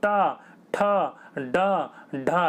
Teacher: जीभ देखिए आपकी फोल्ड होकर पीछे वाले हिस्से से टकरा रही होगी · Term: मूर्धन्य